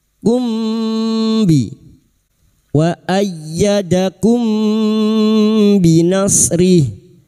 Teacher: Kita samarkan bunyi mim sukun dan mendengung selama tiga harakat. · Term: ikhfa syafawi